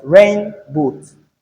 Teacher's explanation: In rain boot, we have the stress on the first syllable or the first word. So here we have the stress on the first word, which is rain. · when you say rain, it must be more audible than boots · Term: noun plus noun compounds